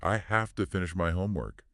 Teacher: The V sound in have often becomes a voiceless F because it assimilates the sound of the T into. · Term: assimilation